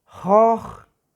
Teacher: Y la palabra joj, la O prolongada, que significa cuervo